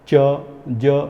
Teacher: Hard palate को जीभ का ऊपर जाके पैलेट को टच होना ज़रूरी है, जिससे पैलेटल साउंड बनते हैं।